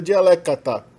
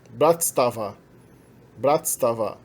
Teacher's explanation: Mas no genitivo plural, primeiro você destaca as duas últimas consoantes, você insere um A longo entre as últimas duas consoantes, e depois coloca um A longo depois da última consoante